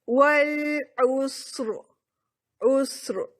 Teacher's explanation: پیچھے دیکھا وہ سین بھی ساکن, اس سے پیچھے دیکھا پیش آئی تھی تو ہم نے را کو پر کر دیا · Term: را کی تفخیم